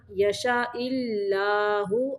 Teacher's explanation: اللہ کا لمبا باریک پڑھنا ہے